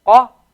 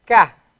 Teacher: The difference between Qaf and Kaf is that the Qaf, in order to pronounce the Qaf, you go a little bit further down your throat to get the Qa sound. Qa. Very sharp sound.